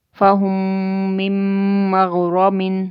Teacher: میم ساکن کے بعد یہاں پہ میم ہے تو ادغام شفوی ہو رہا ہے. اس میم کو چھوڑ دیں گے.